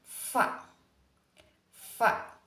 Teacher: gigi atas menjadi artikulator pasif dan bibir bawah menjadi artikulator aktif seperti konsonan fa fa jadi titik artikulasinya itu gigi atas pasif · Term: konsonan labiodental